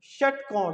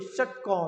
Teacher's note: तो आप देखिए पीछे आपकी जीभ दबेगी, षटकोण, तो बोलिए आपकी मूर्धा पे जाएगी जीभ